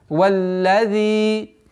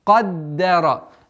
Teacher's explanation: Удлинение в размере двух огласовок касры.